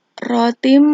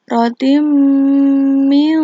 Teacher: Tanwin dimasukkan ke dalam huruf mim disertai dengan dengung. Penekanannya di sini rotim, gitu, rotim mim. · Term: idgham bi ghunah